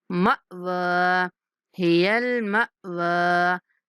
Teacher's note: یہاں پہ میم کے بعد ساکن حمزہ ہے تو اس کو جھٹکے کے ساتھ ادا کرنا ہے